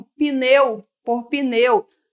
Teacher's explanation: Mas a gente coloca um i ali subentendido depois do p, porque na língua portuguesa a gente não tem não é muito comum a gente ter uma consoante, existe, mas não faz muito parte da nossa língua ter a consoante sozinha ali, né? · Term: epêntese vocálica